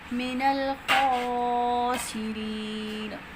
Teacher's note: خا کی آواز کو موٹا پڑھیں گے. را موٹا پڑھیں گے. · حرکات کو جلدی سے پڑھنا ہے. لا میں ال کا اظہار ہو رہا ہے یعنی اظہار قمری ہو رہا ہے. خا کی آواز کو موٹا پڑھیں گے. · حروف مدہ کے بعد سکون عارضی آ رہا ہے تو مد عارض وقفی ہے. اس کو لمبا کر کے پڑھیں گے.